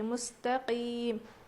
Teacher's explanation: خا جہاں پڑھنا ہے وہاں نہیں پڑھتے بلکہ یہاں پر مستقیم نہیں بلکہ مستقیم. اس میں بالکل بھی کھردری آواز نہیں بلکہ صاف آواز آنی چاہیے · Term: قاف